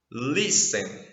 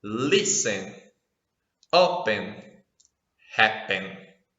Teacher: a sílaba tônica, ou seja, aquela sílaba mais forte de cada verbo aqui, é logo a primeira. Ou seja, quando eu começo a pronunciar o verbo, já vem a sílaba forte.